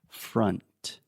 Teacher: this is the schwa sound, fra, and then you have that final N sound. So the tip of your tongue is touching the roof of your mouth.